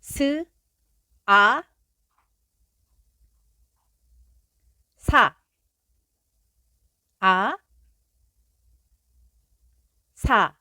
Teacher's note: consonants that are made by the wind, coming out of the mouth through the teeth